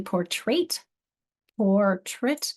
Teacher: My accent's on the or, which is why that sounds like portrait instead of portrait.